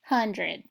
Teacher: our second syllable is going to make the schwa sound